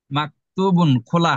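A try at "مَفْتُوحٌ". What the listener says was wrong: না, না, মাফ, আমার সাথে বলেন। মাফ। ফ। ফ। হ্যাঁ, মাফতুহুন। মাফতুহুন। না, না, বুন না, হুন, লাস্টে হা। হ্যাঁ, আর এটা মাফ। ক না, এটা হচ্ছে মাফ।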